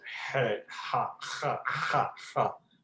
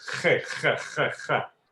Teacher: the het is supposed to be a guttural letter. The sound is a guttural sound. So it's somewhere from the throat